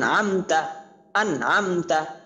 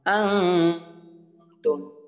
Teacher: তা আসছে, ইকফার হরফ, এই জন্য গুণনা হয়েছে। আনতুম, অর্থাৎ গুণনা করতে হবে।